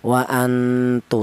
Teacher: Karena ta ini termasuk hurufnya ikhfa. Jadi apabila ada nun mati berjumpa dengan huruf ta, maka nun matinya ini dibaca ikhfa atau nun matinya ini cara bacanya disamarkan